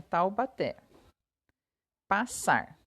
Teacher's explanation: oxítonas pois a sílaba tônica é a última significa então que a sílaba tônica a sílaba mais forte que a gente fala de maneira mais forte é a última Taubaté é fácil a gente saber porque tem o acento né